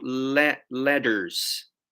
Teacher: when you say the double T or sometimes even the T. It kind of sounds like a D. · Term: American accent